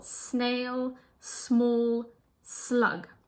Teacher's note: S before M, N, or L is pronounced S, not Z.